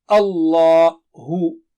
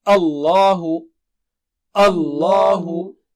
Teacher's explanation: Ah is thin, lam is thick.